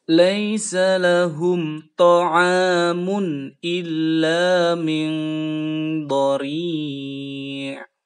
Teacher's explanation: ikhfa jadi berdengung secara samar-samar dan dihubungkan